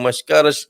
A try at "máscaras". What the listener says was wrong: Máscaras, máscaras. There is an accent missing.